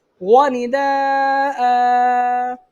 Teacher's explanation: اگر آخر میں جہاں پر ہم وقف کریں گے، وقف کے آخر میں اگر یہ دو زبر ہو، اس صورت میں یہ الف مد سے تبدیل ہو جاتا ہے